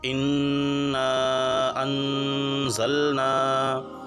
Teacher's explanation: یہاں انزلنا میں نون کے بعد میں زا ہے، یہ اخفا کے 15 حرفوں میں سے ہے، تو یہاں غنہ بھی کرنا ہے۔